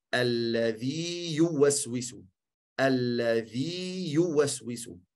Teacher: De eerste ja twee tellen houden. En de tweede ja, normaal uitspreken zonder shadda.